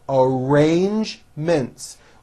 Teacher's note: use a strong r followed by the j sound